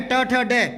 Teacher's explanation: जिन व्यंजनों का उच्चारण स्थल मुर्दा होता है, ऊपर का मुंह का खोखला भाग, जीभ पलट कर आती है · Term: मूर्धन्य